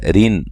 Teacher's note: را کو باریک پڑھیں گے، اور یہ نون تنوین کا اظہار ہے، غنہ نہیں کریں گے۔